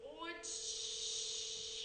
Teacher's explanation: слова очі перший звук О який він голосний позначаємо кружечко очі Який другий звук звук ч який він приголосний мякий позначаємо двома рисочками очі яки останній звук у цьому слові звук